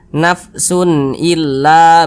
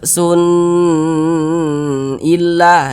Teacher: karena dia izhar maka dibaca jelas tidak berdengung jadi ini kita baca pendek saja nafsun illa begitu Jangan dibaca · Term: izhar halqi